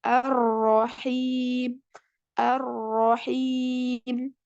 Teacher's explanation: Jangan sampai hilang sifat takrirnya tetap selalu harus ditampakkan ada getaran pada huruf